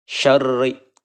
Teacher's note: Syarri ya, sempurnakan dulu tasydidnya, lalu kita tipiskan ya. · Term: hukum ro